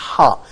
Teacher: I would say there is no kind of connection between tongue and the oral cavity. I don't have any kind of touches, for example, between the tip of the tongue with the alveolar.